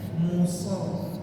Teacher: Jadi ketika dibaca harus nampak suara desisnya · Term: sifat sofir